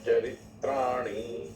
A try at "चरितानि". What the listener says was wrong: चरित्राणी नहीं है, चरिताणी है। हाँ, इसमें ना कभी त्रय शब्द नहीं आता प्राकृत के अंदर, त्रय नहीं आता, तय आता है, तय के ऊपर है ना।